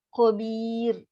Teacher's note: So ra tu ra yang tarkik nipis. Kenapa nipis? Sebab sebelum dia ada huruf ya mat.